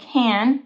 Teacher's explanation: they drop the T, they say can, make a nasal sound because there's this N''T combination, so can.